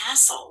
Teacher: what happens is the t is silent and the e is silent